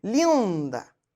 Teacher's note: eu ouço o meu i e ouço Claro mas ele tá nasal